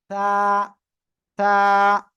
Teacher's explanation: জিহ্বার আগার সামনের উপরে দুই দাঁতের আগার সাথে লাগিয়ে নরম আওয়াজে উচ্চারণ করবেন